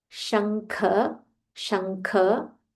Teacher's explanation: There is a half ing and a full kha. Mahaprana kha.